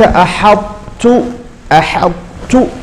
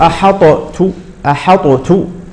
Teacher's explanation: لأن هذه الطاء مدغمة في التاء